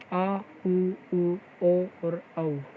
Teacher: इसमें वे स्वर आते हैं जिनका उच्चारण करते हुए जीभ का पिछला भाग क्रियाशील रहता है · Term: पश्च स्वर